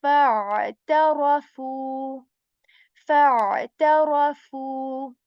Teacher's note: The articulation point of ain is the middle portion of our throat